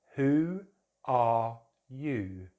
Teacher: So who ends in the rounded vowel, oo, long vowel sound. · we add a w sound when we're working with rounded vowels. We call them rounded vowels, and just three of them in British English, because our lips have to round for these sounds.